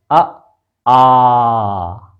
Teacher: पीछे से आ रही है। पीछे क्या है, कंठ।